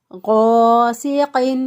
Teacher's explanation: سین کے ادائیگی میں چڑیا جیسی آواز یا سیٹی جیسی آواز آنی چاہیے